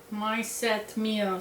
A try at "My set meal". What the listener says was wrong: Your EU is wrong. It's like some cross between an A and an E and a I.